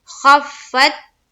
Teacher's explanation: فا کے اوپر کیا ہے تشدید ہے اور تشدید والے حرف کو ہم 2 مرتبہ پڑھتے ہیں تو خا کو فا سے ملایا پھر فا کو تا سے ملایا